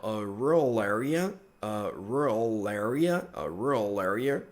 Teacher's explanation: você pode conectar o som do L com area